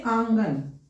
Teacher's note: पहले हम मुह से ध्वनि निकालते हैं साथ ही साथ पीछे पीछे नाक से भी ध्वनि निकालते हैं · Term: अनुनासिक